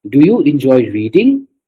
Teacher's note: So in the reading part there was a rising intonation